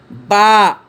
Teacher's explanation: দু ঠোঁটের ভিজা জায়গা হতে উচ্চারিত হয়